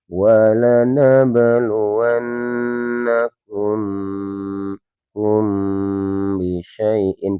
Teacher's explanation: Jadi kita bacanya wabluwanakum hum bisyaaiin ditahan ee dua ketukan dan pasti dengan mengeluarkan suara gunah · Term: ikhfa syafawi